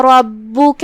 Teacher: را پہ زبر ہے تو را کا حکم ہے تفخیم، ہم اسے بھاری آواز میں ادا کریں گے. با کی تشدید کا دھیان رہے.